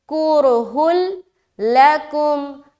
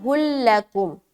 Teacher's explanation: ادغام کے معنی ہی ہے ملانا، تو ادغام کریں گے یعنی کہ ملائیں گے۔ لیکن یہ جو ادغام ہوگا بغیر غننے کے ہوگا۔ بتایا تھا دو حرف ایسے ہیں جو تنوین یا نون ساکن کے بعد آ جائے تو وہاں پر ادغام ہوتا ہے، لیکن بغیر غننے کے ادغام ہوگا، یعنی کہ وہاں اظہار ٹائپ ہوگا۔